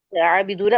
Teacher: 2 count खींचेंगे और rounding भी करेंगे, दम्मा की वजह से भी और वाव की वजह से भी। यहाँ ठीक, जो है राउंडिंग में होंगे होंठ। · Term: मद असली